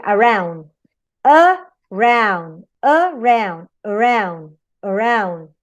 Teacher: in a word as around, you have the primary stress in round, only one stress.